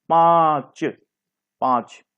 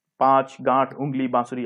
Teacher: तो इसमें नाक की भी सहायता लेते हैं और गले की भी सहायता लेते हैं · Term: अनुनासिक